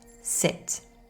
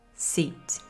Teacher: The I sound is shorter and less stretched than the E sound.